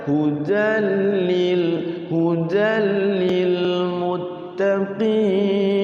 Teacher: nggak boleh lam ditahan, itu langsung aja